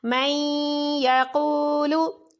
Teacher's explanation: نون ساکن کے بعد یا حروف یرملون میں سے ادغام بالغنہ ہوا